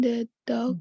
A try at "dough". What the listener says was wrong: Dough. The dough, the GH is silent. Nggak bunyi nih.